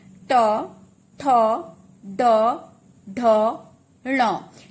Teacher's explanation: जब आप उच्चारण करेंगे तो आपकी जीभ ऊपर की तरफ, दांत के ऊपर नहीं, दांत के ऊपर जो आपके ये मसूड़े हैं उस पर नहीं, जो आपके टंग जब फोल्ड करेंगे तो ऊपर जाके टच करेगी, जैसे ट फोल्ड हो जाएगी टंग और ऊपर जो है टच करेगी आपकी जिह्वा। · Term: मूर्धन्य ध्वनियां